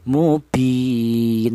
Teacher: boleh dibaca qasar atau artinya pendek, yaitu panjangnya cukup satu alif atau dua harakat atau dua ketukan